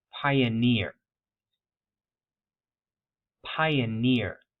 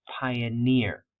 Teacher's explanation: Pioneer has some initial stress on the I vowel sound, but the primary stress is on that suffix